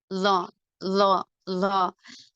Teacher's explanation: நா உடைய நுனி மேல் நடு பற்களின் ஈரில் இணையும் போது உண்டாகும்